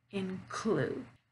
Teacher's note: I'm stressing on the second syllable, clued. Include. Now, in noun, we're going to stress the first syllable.